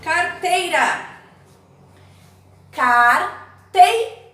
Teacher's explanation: Qual é a sílaba mais forte? Tei. É a última? Não, é a penúltima, então ela é uma paroxítona.